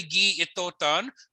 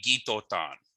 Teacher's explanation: if you've got a word that ends in a vowel like gi and another word that begins with a vowel like itotan, you can drop the I in itotan. So it would be gitotan.